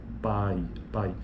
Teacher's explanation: Veja que a palavra pai, o que na fala, naturalmente, a gente percebe que a vogal proeminente é a vogal mais forte. A vogal A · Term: ditongo decrescente